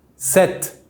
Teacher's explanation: just imagine the P before the T is not there, it is silent